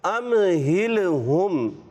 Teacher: میم ساکن کے بعد ہا آیا، یہاں پر اظہار شفوی کا قاعدہ ہے